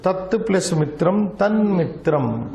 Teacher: Because it is followed by ma, last letter of pavarga, this forces it to become Anunasika. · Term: anunasika sandhi